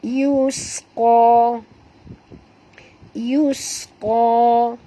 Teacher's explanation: huruf sin bunyikan safirnya yus. Qa tebal dua harakat.